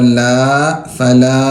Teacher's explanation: مد کو 4 الف کے برابر کھینچیں